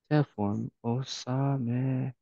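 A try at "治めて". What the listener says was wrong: Osamete. No glottal stop.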